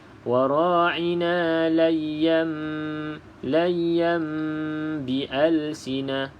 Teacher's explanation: iqlab iaitu menukarkan bunyi nun kepada huruf mim. Sebab tu dia letak mim dekat sini sebagai tanda kena bunyi mim. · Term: hukum iqlab